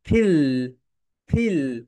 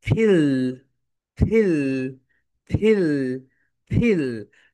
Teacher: যখন তোমরা এফ উচ্চারণ করবে, উপরের দাঁত নিচের ঠোঁটের সঙ্গে টাচ করবে